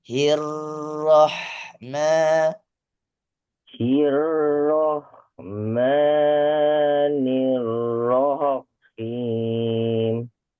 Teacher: di atas ro ada tasydid, ada penekanan. Berarti juga harus ditahan sejenak